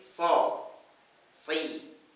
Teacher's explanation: So-nya itu monyong, so. Ya, bunyinya sin sebetulnya tapi dimonyongkan jadi o